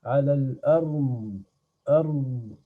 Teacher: c'est le côté de la langue qui vient s'appliquer avec les dents supérieures d'un côté et d'un autre. Soit des deux côtés, soit côté droit, soit côté gauche, ou alors des deux côtés en même temps. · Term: le dad